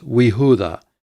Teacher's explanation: Now, this would have originally been Yehuda with a vocal schwa there, but when you add the conjunction, the vocal schwa disappears and it simply becomes Wehuda and Judah.